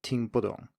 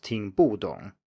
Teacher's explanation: the bu in here is not pronounced with the full fourth tone, but rather a neutral tone, 听不懂, not 听不懂.